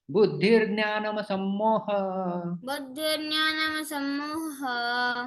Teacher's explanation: विसर्ग का रेफ में परिवर्तन हो जाता है, संधि हो जाता है।